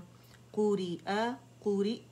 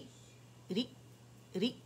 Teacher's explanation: حمزہ ساکن ہو جائے گا. اور جو ہمارے اوتار صوتیہ ہیں ووکل فورڈ، وہ یوں ساکن ہو جائیں گے، مل جائیں گے